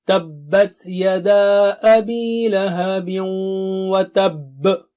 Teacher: تب یہاں پر شدید قلقلہ ہوگا